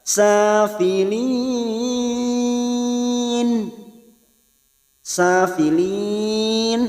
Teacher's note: mat arid disukun 4 harokat kita panjangkan